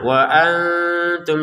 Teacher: nun sukun ketemu ta ini kita baca dengan samar. Wa antum jangan dibaca wa antum wa antum.